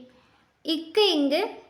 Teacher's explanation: இக்கு இங்கு நாவின் முதல் அன்னத்தின் அடி